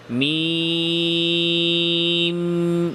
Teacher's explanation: শেষে মিম সাকিন, তো মিম সাকিন তাওয়াসসুত বাইনিয়া, সামান্য আওয়াজ জারি।